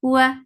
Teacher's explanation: makhraj of waw is circle in your lips, for fatha upon jaws, the sound is short